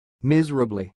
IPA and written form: ˈmɪzərəbli (miserably)